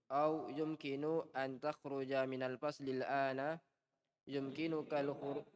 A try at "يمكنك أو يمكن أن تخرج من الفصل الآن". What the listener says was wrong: jangan bertanya, tidak ada tanda tanya sini. Tadi bertanya ya nadanya lurus. Ini tidak bertanya, nadanya bertanya.